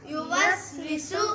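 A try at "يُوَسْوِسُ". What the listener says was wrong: اس کو ہم لمبا نہیں کریں گے, ویسو نہیں کریں گے, یو نہیں کریں گے, جلدی سے پڑھنا ہے. یو وس ویسو. اگر ہم پڑھیں گے یو وس ویسو تو سارا ہی غلط ہو جائے گا. کتنا غلط ہو جائے گا کہ بیڑا ہی غلط ہو جائے گا.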